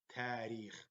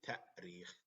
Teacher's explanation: we do not say tarikh, but we say ta'rikh, because the hamza is kind of shortening.